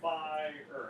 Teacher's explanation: I think most people would say it's trochaic, so you're going to emphasize the first part, and then you have like a little bit of an on the end.